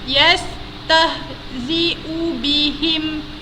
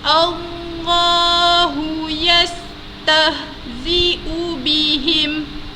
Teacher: ha yang keluar daripada pangkal halkum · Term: ha ketawa